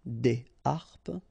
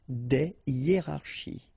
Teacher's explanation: So, but in that case still, even if you've got this H, okay, it belongs to this aspiré group of words, so containing this H, okay, and it means that you won't have the possibility to make the liaison between your article and your word